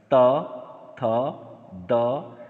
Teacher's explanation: ये जीभ जो है नीचे के दांत को स्पर्श कर रही है, इसका मतलब हुआ ये दंत वर्ण है।